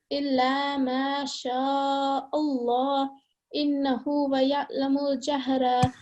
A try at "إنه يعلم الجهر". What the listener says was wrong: there's no wa. Hang on a minute. Innahu ya'lamul jahra. There's no wa here.